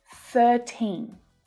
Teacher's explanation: For 13 to 19, the second syllable is the strongest. The teen is always stressed.